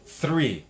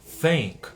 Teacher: você coloca a língua para fora, sopra e traz a língua de volta para dentro. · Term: som de TH